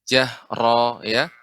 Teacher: di antara cara mengucap ro, yaitu getarannya sedikit